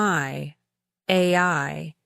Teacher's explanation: you start with a lower tongue position and then move your tongue upward and forward to produce the second part of the diphthong